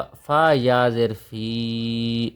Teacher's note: یا مدہ ایک الف کے برابر لمبا ہوگا